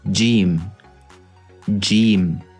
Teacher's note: It's pronounced from the middle of the tongue and the roof of the mouth.